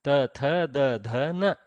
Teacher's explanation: Dantaha, these use teeth. To say this, we will strike the tongue to the teeth.